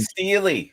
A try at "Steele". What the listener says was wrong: It is Steele, not Steely. It's Steele.